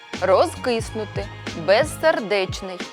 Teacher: без залежно від тем до мови можемо вимовляти дзвінко або глухо у повільному темпі мовлення кінцевий приголосний у префіксах роз без перед глухим вимовляємо дзвінко